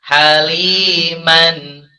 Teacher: nun sukun dan tanwin nya tetap dibaca jelas tidak disamarkan atau dialihkan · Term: izhar